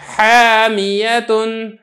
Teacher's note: اسی طریقے سے تیسری مثال دیکھیں حامیتن، اب یہاں پہ اگر آپ غور کریں گے تو ہا چونکہ حروف مستعفلہ میں سے ہے اور الف یہ حروف مستعفلہ کے بعد آ رہا ہے لہذا الف کو بھی میں نے باریک کر کے ادا کیا ہے